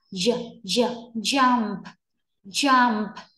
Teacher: mím môi vào cái âm cuối cùng này nhé. J, j, jump, chú ý khẩu hình đúng thì âm này ra nó mới đúng được này.